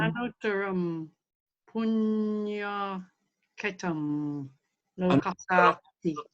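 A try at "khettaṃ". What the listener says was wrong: Sorry, it should be a double T. Should be a double T. Ketam. It's from Kshetra, Sanskrit for field.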